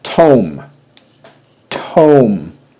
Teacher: I hear three sounds but I hear a vowel a long vowel Oh followed by a consonant mm-hmm that tells me that I'm gonna need something following that